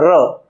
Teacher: રનું ઉચ્ચારણ કરતી વખતે જીભ, એનો પાછળનો ભાગ એ કંપન કરે છે, વારંવાર કંપન કરે છે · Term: પ્રકંપી વ્યંજન